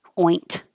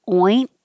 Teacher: your tongue is going to the in position, which is the same as the T position. So don't release the air. Oint. Just hold it.